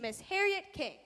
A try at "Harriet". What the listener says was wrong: Harriet rhymes with parrot. It's pronounced Harriet. The I is silent.